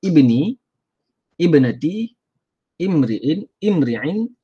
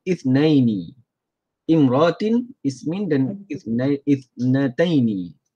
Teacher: semuanya baca e bukannya a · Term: kasrah